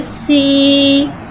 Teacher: सीन के नीचे खड़ी ज़ेर है, खड़ी ज़ेर को एक अलिफ यानी 2 हरकत के बराबर खींच के पढ़ेंगे और खड़ी ज़ेर को नीचे गिराते हुए अदा करके पढ़ेंगे।